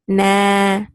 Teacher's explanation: Like for example, if you see here at the end of noon, fatha, and alif, it's na, two counts. So that fatha is getting extended with that alif, which is known as a mad.